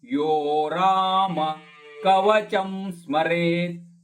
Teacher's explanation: ನಾ ಮತ್ತು ಮೇ ದೀರ್ಘ ದಂ ನಾಮೇದಂ ವಜ್ರ ಪಂಜರ ನಾಮೇದಂ ಯೋ ರಾಮ ಯೋ ದೀರ್ಘ ರ ಕೂಡ ದೀರ್ಘ